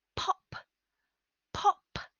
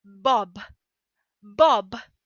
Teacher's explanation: strong pronounce your with an explosion of air through the lips place your hand on your throat and say pop pop you only feel no vibration · Place your hand on your throat and say pop, pop. You will feel no vibration for the p, p sound. Place your hand on your throat and say bob, bob. You'll feel that vibration for the b, b, b, a voiced sound.